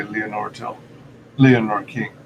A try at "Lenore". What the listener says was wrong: I think it's actually pronounced Lenore. I know it does look like Leonore at first, but I think it's just Lenore.